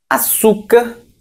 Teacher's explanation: açúcar, paroxítona, porque o su é a sílaba mais forte.